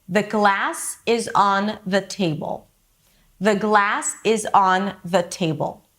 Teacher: We have glass and table, two nouns, and these are the words that I'm going to stress in this sentence. Not every content word is stressed the same, but for now, let's agree that these two words are the words that I choose to stress.